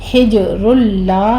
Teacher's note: جیم کے اوپر آپ نے قلقلہ کرنا ہے، آگے تنوین کا قاعدہ ادغام بلا غنہ کریں گے۔